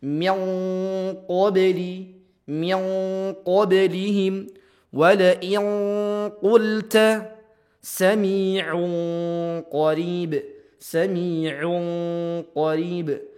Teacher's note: didekatkan dan ditempelkan ke huruf qaf dengungannya.